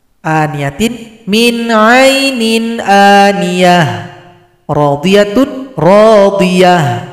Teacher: Jadi tamarbutoh, apapun harokatnya langsung disukunkan jadi ha besar.